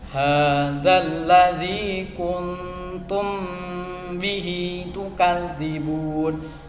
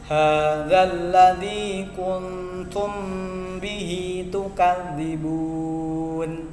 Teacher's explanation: Ingat cara membacanya samar didengungkan. Mim ketemu ba. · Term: ikhfa syafawi